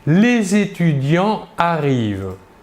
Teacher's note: nous ne faisons pas la liaison entre le s dernière lettre du mot étudiants et le verbe arrive qui commence pourtant par une voyelle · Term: liaison est interdite